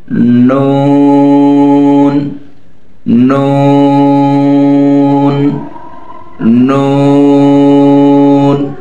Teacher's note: তার বরাবর উপরে এই তালুর সঙ্গে লাগাইতে হবে নয় নাম্বার মাখরাজ জিহবার আগা তার বরাবর উপরের তালুর সঙ্গে লাগাইয়া উচ্চারিত হয়